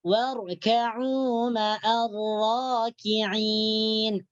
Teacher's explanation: ketika kita membaca alif lam sukunnya terus dimasukkan atau diidghamkan ke dalam huruf ra. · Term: alif lam syamsiyah